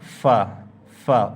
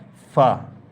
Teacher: উপরের দাঁত এবং নিচের ঠোঁট মিলে ফা ফা উপরের দাঁত এবং নিচের ঠোঁট মিলিত হয় ফা